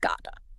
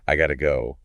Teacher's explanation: Linguists call it an alvolar flap. So when you hear gota you're not hearing a hard T, you're hearing a quick D.